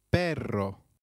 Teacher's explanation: Double r in Spanish can also be referred to as rolled r The pronunciation is almost with a vibrating sound